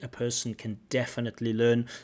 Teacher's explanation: in terms of the sentence stress, she puts the stress on definitely.